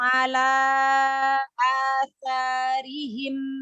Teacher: Ala dipanjangin alanya. 4 ini harokat.